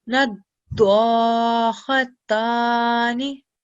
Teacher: haruf dad over here has a shadda, so we need to press down on the sound.